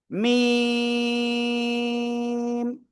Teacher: দুই ঠোঁটের শুকনো জায়গা থেকে, বাইরের অংশ থেকে অক্ষরটা উচ্চারিত হবে এবং 4 আলিফ টেনে পড়তে হবে।